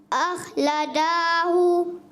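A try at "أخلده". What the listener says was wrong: اخلدا، لا دال کی زبر کھینچنی نہیں ہے، اخلدہ،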